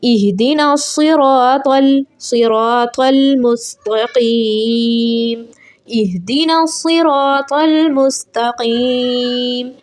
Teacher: صاد موٹے حروفوں میں سے ہے اس لیے اس کو موٹا پڑھا جائے گا